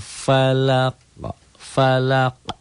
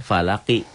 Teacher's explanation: Tapi kalau dihentikan jadi qul a'udzu birabbil falaq. Falaq. Dikol-kolah ya, itu. Ada pantulannya. Tapi itu terjadi hanya pada huruf kol-kolah yang 5.